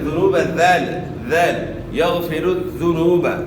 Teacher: دال کو اپنے مخرج سے ادا کرنا ہے, یعنی زا سے تبدیل نہیں کرنا. یغفر الذنوب نہیں پڑھنا ہے, ذنوب ذال ذال یغفر الذنوب.